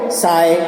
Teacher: राजस्थान की कुछ दक्षिण और दक्षिणी पश्चिमी बोलियों में वत्स्य ध्वनियों च, छ, ज, झ को दंत्य स के अनुसार बोला जाता है। जैसे चाय को साय, च को यानी स बोला जा रहा है।